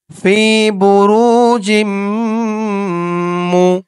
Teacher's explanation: ঈদগামে বাগুন্নাহ, গুন্নাহ করতে হবে।